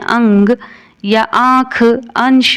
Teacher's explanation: जिन भी शब्दों के ऊपर ये चंद्रबिंदु लगा होता है उनको हम अनुनासिक कह लेते हैं, क्योंकि जब हम इनका उच्चारण करते हैं अंग या आँख, अंश, तो इस तरीके के शब्दों का जब हम उच्चारण करते हैं तो हवा नाक और मुंह दोनों से निकलती है, इसलिए इन्हें अनुनासिक स्वर कहते हैं।